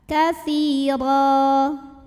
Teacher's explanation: baris tanwin fathahnya jadi fathah 1 dan panjang 2 harokat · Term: mad iwad